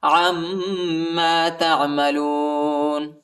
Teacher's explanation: عین کو میم کے ساتھ ملائیں گے اور غنہ بھی کریں گے